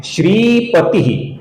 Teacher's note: यहां पर ती ह्रस्व है और श्री दीर्घ है